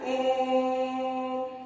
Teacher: प्लुत स्वर में हर्षस्व स्वर के तिगुना समय लगता है और दीर्घ स्वर के दुगना समय लगता है।